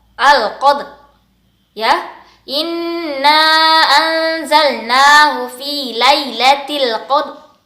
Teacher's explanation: Kalau huruf ro makhrajatul hurufnya ada di ujung lidah setelah huruf na. Jadi pada saat kita menyukunkan dan mengakhiri ayat pertama surat Al-Qadar, bacanya seperti ini ya nak.